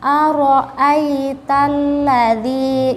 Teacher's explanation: Jadi kalian harus mengucapkannya dengan tebal, bukan ro tipis, tapi tebal. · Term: ro tebal